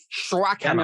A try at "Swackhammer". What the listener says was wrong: Swack, not Schwack.